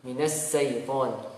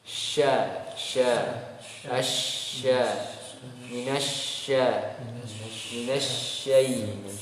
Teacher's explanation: Kalau shin tengah lidah naik ke atas ya, naik ke atas langit-langit dengan memberi celah sedikit. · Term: huruf shin